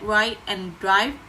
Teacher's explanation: Words such as ride and drive with the I sound are pronounced more as oi, but not overemphasized.